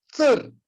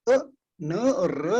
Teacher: इसमें पूरा अ नहीं है, आधा ही अ है, जो ह्रस्व है